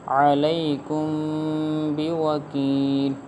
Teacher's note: گنہ ہوگا کیونکہ میم ساکن کے بعد حرف با آ رہا ہے